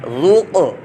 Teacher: یہاں پر قاف ساکن دیکھے آ گئی قلقلہ آ گیا تو یہاں قلقلہ کریں گے ذوق. اب یہاں پر قلقلہ نہیں کیا کسی نے تو وہ ایسے پڑھے گا ذوق، تو یہ قلقلہ نہیں ہوا، اس میں قلقلہ کریں گے ذوق.